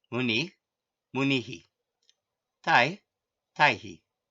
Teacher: The Visargas are pronounced as an echo of the previous vowel when at the end of a word or sentence.